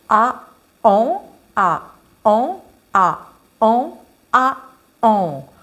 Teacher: on alterne une voyelle orale une voyelle nasale